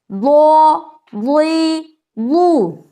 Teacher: آپ کی زبان کی جو کروٹ ہے بالکل اس کے اوپر آپ کی جو داڑھ ہے وہاں ٹچ کرنے سے یہ ضاد کا مخرج ادا ہوگا